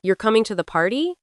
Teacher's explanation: with a rising intonation like you're coming to the party, then it sounds like a question, >> right? English uses rising intonation for yes, no questions, and falling intonation for statements.